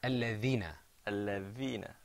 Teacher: And what you did was you put your tongue on your teeth. Okay? You kind of stuck your tongue out a little bit.